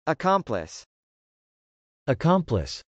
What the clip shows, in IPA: əkˈɑmpləs